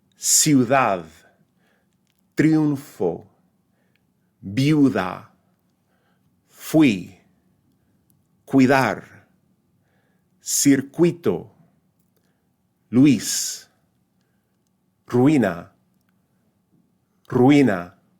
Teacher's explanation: Sometimes the two weak vowels appear together with neither one of them being stressed. These tend to be pronounced as rising diphthongs